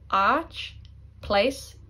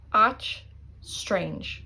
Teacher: So you elongate it when you have the fada. Don't want to forget that fada.